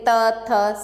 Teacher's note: जीभ है आपकी कहां लगती है दांतों पर लगती है और हवा दांतो उसको स्पर्श करके बाहर आती है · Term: त वर्ग